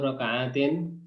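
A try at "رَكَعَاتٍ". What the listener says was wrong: Raka'atin ya, panjang ya. Soalnya jamak ya.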